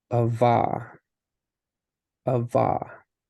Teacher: Because it follows its normal, because there's not an accent above any of the letters. And so we're separating out those syllables and putting the stress over the last syllable